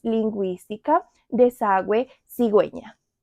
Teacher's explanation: In this case, you need to pronounce the u like we.